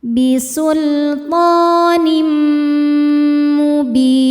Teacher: Cara bacanya, tanwin ini dimasukkan ke mim, kemudian dengungkan, tahan ya. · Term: idgham bi gunnah